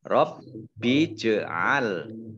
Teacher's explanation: Rob bij'al, baknya dibaca double, ada tasdidnya. Kemudian jim sukun, bacaan qalqalah dimantulkan, ditampakkan mantulnya